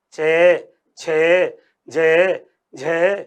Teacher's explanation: स्पर्शी व्यंजन तो हैं लेकिन संघर्ष भी होता है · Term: स्पर्श संघर्षी व्यंजन